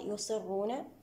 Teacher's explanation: الصاد هنا تفخيمها من الدرجة الخامسة لأنها جاءت مكسورة وهنا لا نقول أن بها تفخيما نسبيا لأنها بسبب إطباقها يصرون